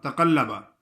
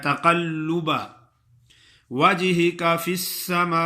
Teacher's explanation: قد نرى تقلب، اکثر لوگ پڑھتے ہیں تقلب، لام کی زبر پڑھ لیتے ہیں، لام کا پیش پڑھنا ہے